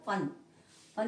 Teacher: दांत और होठ दोनों का प्रयोग करेंगे।